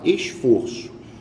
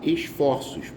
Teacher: verificamos que o timbre da vogal tônica é aberta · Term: plurais metafonicos